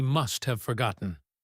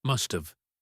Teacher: The have has reduced to a short schwa sound